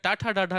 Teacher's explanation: जब तक ये जिह्वा आपकी मूर्धा में नहीं टकराएगी तब तक टाठा डाढ़ा का उच्चारण आप सही से दोस्त नहीं कर सकते